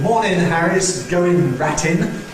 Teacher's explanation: an aristocratic use of the alveolar nasal, [n]